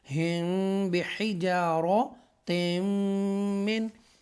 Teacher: साकिना मीम के बाद अगर बा आ जाए, यहाँ इस केस में है, तो इख्फ़ाए शफवी होगा और गुन्ना भी करेंगे